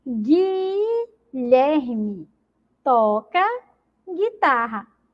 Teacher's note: Observem também que nessas palavras, a letra U não é pronunciada